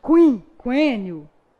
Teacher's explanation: Então, naquela em que o U não foi pronunciado, houve a formação de um dígrafo. Mas na palavra quinquênio, tanto o som do Q quanto o som do U foram pronunciados.